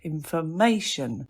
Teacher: information, that's four syllables and you've got the stress on the third